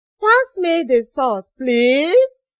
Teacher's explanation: We use rising tone for making polite requests.